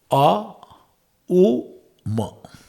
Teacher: Now you utter the Shabda A from Kantha. U from our lips. Ma from where? Lips plus Nasika.